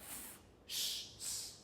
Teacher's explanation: What a fricative is, if you think of the s or f or sh, what happens is the lips come very, or the tongue comes very close to a part of the mouth, but doesn't stop the air coming out.